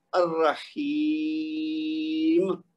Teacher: پہلے ہم 2 حرکت دے رہے ہیں لیکن آخر میں زیادہ لمبا کر دیتے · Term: مد عارض